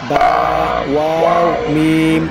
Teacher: দুই ঠোঁটের মধ্যস্থল হইতে পড়া হয় 3টি অক্ষর বা, ওয়াও, মিম